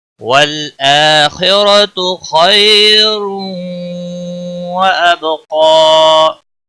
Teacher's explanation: تنوین کے بعد حروف یرملون کا واو آیا ہے، ادغام باگنہ ہوگا · حمزہ کے اوپر کھڑی زبر ہے، ایک الف کے برابر کھینچ کر پڑھیں گے